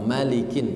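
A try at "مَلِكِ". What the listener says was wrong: Oke, coba emaknya dipendekkan Pak. Malikin. Masih kepanjangan.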